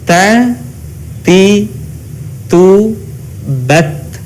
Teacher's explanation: dikatakan fasih huruf ta-nya ketika kita melafalkannya dengan mengalirkan udara kita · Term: al-hamas